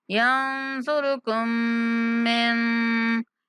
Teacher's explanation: صاد را کو موٹا پڑھیں گے